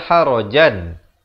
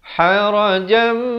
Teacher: Bacanya dengung 2 harakat. Asalnya harajan, bunyinya jan, tapi bila datang mim jadi harajam, dengung 2 harakat. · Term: idgham bi gunnah